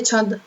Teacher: આપણે ટપકાનો ભાર સહન કરવો પડે, જેમ કે છંદ એટલે આપણે ટંકો કરીને બોલવું પડે. છ ની ઉપર ફૂલ ભાર દઈને બોલવું પડે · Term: તીવ્ર અનુસ્વાર